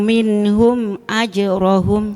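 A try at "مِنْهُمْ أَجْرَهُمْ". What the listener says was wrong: Awas, jangan putus mimnya. Minhum idhar syafawi. Tapi jangan putus mimnya. Hum aja. Jangan dipanjangkan juga.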